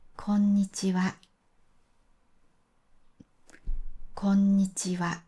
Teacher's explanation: 普通は全部フラットで、こんにちはと言います。